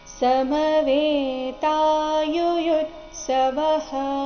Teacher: ಸಮವೇತಾ ವೇ ಮತ್ತೆ ತಾ ದೀರ್ಘ ಬರಬೇಕು. ಯುಯುತ್ಸವಃ ಎರಡನೇ ಯು ಮೇಲೆ ಆಘಾತ ಬರಬೇಕು, ಮುಂದೆ ಅರ್ಧತ ಮತ್ತೆ ಪೂರ್ತಿ ಸ ಈ ಎರಡು ವ್ಯಂಜನಗಳಿಂದ ಕೂಡಿದ ಸಂಯುಕ್ತ ಅಕ್ಷರ ಬಂದ ಕಾರಣ ಯುಯುತ್ಸವಃ.